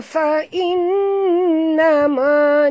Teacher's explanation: Ja mat tabi'i, dua harakat, hada, ha sini ha simpul dalam bunyinya, hada fa innama, nun bertasydid, wajib dengung, wajib al-gunah, ya, dengung dua harakat